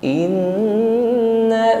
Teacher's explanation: sempurnakan huruf nun yang bertasydid ya gunahnya atau dengungnya